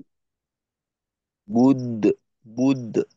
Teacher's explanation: দালটাকে কলকলা হবে এখানে